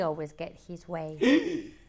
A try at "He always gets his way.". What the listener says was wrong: Did you say get or gets? Don't tell me you're leaving out the S.